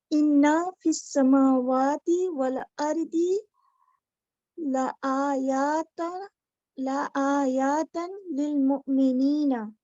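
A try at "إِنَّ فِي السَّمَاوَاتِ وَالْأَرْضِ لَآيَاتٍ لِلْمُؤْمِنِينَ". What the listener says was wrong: ला आयातन होगा, नहीं, इसके ऊपर तो तन आता ही नहीं, जमा मुअन्नस साकिन।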